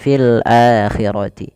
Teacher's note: hamzah bertemu dengan huruf mad yang 3 alif waw ya, maka dinamakan dengan mad badal, panjangnya 2 harokat